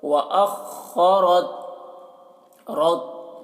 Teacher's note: खौ को पुर पढ़ना है और रॉ को भी पुर पढ़ना है